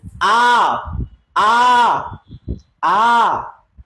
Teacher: আ অনেক বেশি ছড়িয়ে যায় মুখটা আ ছড়িয়ে যাচ্ছে না ছড়িয়ে যাচ্ছে না ঠিক আছে মুখটা ছড়িয়ে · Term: বিবৃত